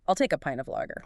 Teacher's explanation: You stress the important words, pint and lager. The rest is just glue.